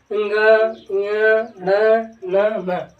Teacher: ये बिना नाक के नहीं निकाले जा सकते, सर्वाधिक जोर जो इनका लगता है वो नाक के द्वारा बोलने में लगता है, इसीलिए इन्हें क्या कहा जाता है, अनुनासिक कहते हैं।